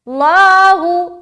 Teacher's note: ला को खींचेंगे मोटा रखते हुए क्योंकि इस मीम के ऊपर पेश है तो जाहिर बात है ये लाम मोटा होगा।